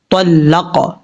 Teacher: سے، طلق، طا حروف مستعلیہ میں سے پر پڑھا جائے گا، قاف حروف قلقلہ میں سے اس کو بھی قلقلہ کے ساتھ پڑھیں گے